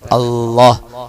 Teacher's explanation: അള്ളാഹ് എന്ന ഉച്ചാരണം കൃത്യമായിരിക്കണം. നാവിന്റെ തുമ്പ് മുൻപല്ലുകളുടെ മുകളിൽ, അത് മുളച്ചു വരുന്ന ആ മോണയുടെ മാംസത്തോട് ചേർന്ന് നിൽക്കുന്ന ആ മുകളിൽ സ്പർശിതമായി തന്നെ